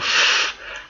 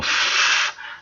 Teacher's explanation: But a labiodental, again, as it says, dental, teeth, labio, lips. So I put my bottom lip on my top tooth and I go f